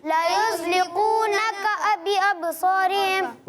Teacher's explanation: اچھا قاف اور کاف میں فرق کریں، ٹھیک ہے؟ قاف کو پر پڑھنا ہے، کاف کو باریک پڑھنا ہے